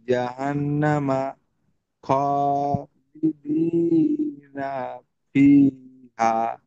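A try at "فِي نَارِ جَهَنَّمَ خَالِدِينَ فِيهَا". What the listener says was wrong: জি, মাশাল্লাহ।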